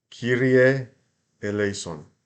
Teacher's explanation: that lei is a lay, so we want to make that a diphthong because it's one note. Keep in mind that you don't want to say Kyrie eleison.